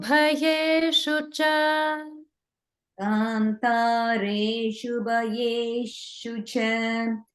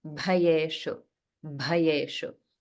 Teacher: this is the Mahaprana bha and not the regular ba sound